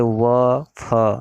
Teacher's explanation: इन वर्णों के उच्चारण में ऊपर के दांत व नीचे के होठ का प्रयोग किया जाता है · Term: दंतोष्ठ्य